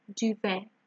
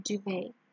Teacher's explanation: The T here is silent, like ballet, okay, duvet.